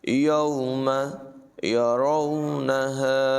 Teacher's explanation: یوم واولین ہے، اسے نرمی سے ادا کریں گے